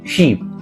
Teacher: long ই শিপ শব্দে ব্যবহৃত হয়েছে, যা একটু দীর্ঘ সময় ধরে টেনে বলতে হয়